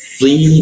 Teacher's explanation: Sal mi narisinya ee di belakang lidah ya di belakang gigi ya. Si lidahnya dilengkungkan. Lalu ketika membaca si itu ada tekan ke bawah